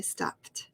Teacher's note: you add e d so you're going to say stopped so when you have a p it sounds like a t